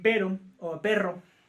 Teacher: se producen con una o varias vibraciones de la lengua contra alvéolo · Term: vibrantes